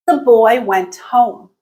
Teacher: at the end of the utterance there's a very marked dip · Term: falling intonation